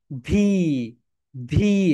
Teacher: F and ভি যখন তোমরা উচ্চারণ করবে, তখন তোমাদের উপরের দাঁত নিচের ঠোঁটের সঙ্গে টাচ করবে। ভি ভি, সবাই বলো মাই ডিয়ার সোলজার্স।